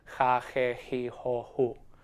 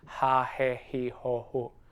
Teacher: So J, J, it has the same sound with all 5 vowels, and that sound is ja, je, ji, jo, hu. In some regions like in Spain and in some regions in Latin America, that sound is slightly softer. It's more similar to the English H, so it will sound ja, je, ji, ho, hu.